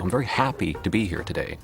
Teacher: I think generally, most Americans, they go up early in the sentence, stress-wise, and then they come down hard at the end.